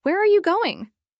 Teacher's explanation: We practiced keeping the tone down at the end